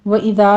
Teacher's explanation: وَإِذَا میں دال کو نرمی سے پڑھنا ہے، آگے الف مدہ ہے۔